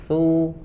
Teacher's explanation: ujung lidahnya ditempelkan ke ujung gigi seri atas ya, ujung lidah ditempelkan ke ujung gigi seri atas. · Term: huruf sa